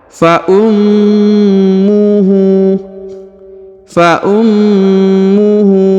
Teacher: mim atau huruf Ma ditahan dan ditekan karena terdapat tanda tasdid huruf ha dibaca panjang dua harakat karena berharakat u terbalik